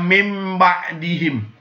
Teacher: huruf nun nya berubah menjadi huruf Mim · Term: iqlab